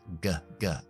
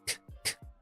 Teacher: Misma articulación, la sonoridad es lo que los diferencian. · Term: hermanas sonoras